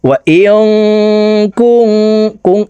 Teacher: এই নুন সাকিনকে নাকের ভিতরে লুকাইয়া গুন্নার সহিত পড়তে হবে। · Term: ইকফা গুন্না